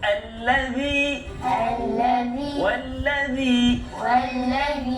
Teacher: Dia makhraj dekat mana tu? Hujung hujung lidah huruf zal, hujung lidah keluar sikit.